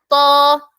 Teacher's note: heavy letter ആണ് അപ്പൊ നാവിന്റെ ബാക്ക് സൈഡ് ഉയരണം ബാക്ക് സൈഡ് ഉയരുന്നത് നമുക്ക് ഫീൽ ചെയ്യണം ആ രീതിയിൽ നമ്മൾ എന്താക്കുക ഉയർത്തിയിട്ട്